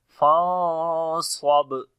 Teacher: با کے اوپر قلقلہ کریں گے، درمیانہ قلقلہ ہوگا